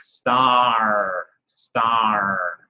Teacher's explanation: Always try to draw out the R a little bit, so it's actually sort of a little bit more like multiple R's here.